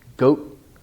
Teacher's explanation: no release of the t. Goat, long vowel.